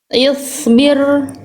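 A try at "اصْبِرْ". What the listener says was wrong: Nah, tebalkan lagi sedikit. Isbil. Short sukunnya udah bagus, cuman masih belum konsisten aja ya.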